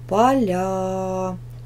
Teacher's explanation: ударение падает на второй слог